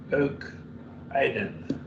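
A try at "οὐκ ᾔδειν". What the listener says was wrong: You pronounce it Aden instead of Adane. Is there a reason? Because that's a diphthong and it's a.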